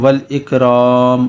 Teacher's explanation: یہاں پر باریک کاف ہے تو اس کو ہم باریک پڑھیں گے، والاکرام، اور را کو پر یعنی موٹا پڑھیں گے